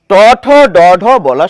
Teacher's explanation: ট ঠ ড ঢার সময় আমাদের জীবটি পরিষ্কারভাবে ওই দন্ত মূলে গিয়ে স্পর্শ করে